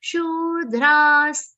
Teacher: Dra is followed by Visarga, which is pronounced like half sa.